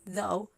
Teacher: though is voiced it has some vibration in your vocals Falls the last fricative is the H and